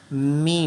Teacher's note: Next ہے میم، میم۔ میم کی آواز کے لیے دونوں ہونٹوں کو آپس میں ٹچ کرتے ہیں، ملاتے ہیں